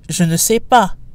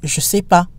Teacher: in casual French, we drop the ne, which gives us je sais pas.